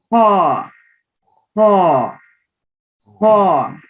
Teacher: The ha is like a scratching sound. Scratch your throat, or you can say little snoring sound, kind of.